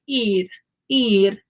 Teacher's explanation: It almost sounds like a D, but it's not. My tongue is touching the roof of my mouth one time. It's not a D, it's an R, but it's a different R than in English. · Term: flap R